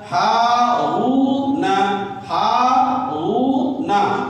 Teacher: واو یہاں پہ واو مدہ ہے اس کو بھی کھینچا جائے گا